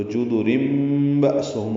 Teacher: یعنی رن میں جو تنوین میں جو نون ساکن پڑھا جاتا ہے اس کی جگہ میم پڑھیں گے، اس کو اقلاب کہتے ہیں